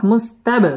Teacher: বা কলকলার হরফ ধাক্কা দিয়ে পড়তে হবে